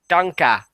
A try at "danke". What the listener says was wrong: But it's not dunka. It's danka. Yeah, or at least I believe that's how it is. I've had friends who speak German, and I believe that's the correct pronunciation.